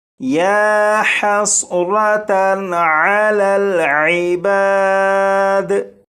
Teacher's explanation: ये जो तनवीन है इस तनवीन पर गुन्ना नहीं करेंगे